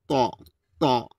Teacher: তাল হাতব, এখানে অনেকে তাব বলে, তাব বলা যাবে না, এখানে ত উচ্চারণ রয়েছে, ত গোল করে দেবে, ত জুবার আগাতে মোটাভাবে উচ্চারণ হবে